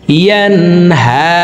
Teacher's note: নুন সাকিনের পরে ইজহারের 6 হরফের ভিতরে একটি হরফ হা আসছে, এই কারণে এই নুন সাকিনকে গুন্না ছাড়া স্পষ্ট করিয়া পড়ব।